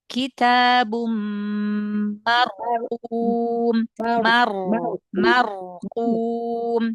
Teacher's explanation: huruf ro yang tafkhim, ro sukun sebelumnya fathah, kadang-kadang kurang ditebalkan. Jadi tebalkan ya.